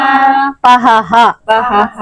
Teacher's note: విసర్గల కూడా హగా పలకాలి కదా పహః అని చదవాలి